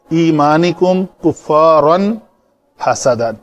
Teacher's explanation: तनवीन के बाद हरूफ हल्की में से हा आ गया है तो इसको कुफ्फारन पढ़ के आगे निकलेंगे। कुफ्फारन हसदन नहीं करेंगे।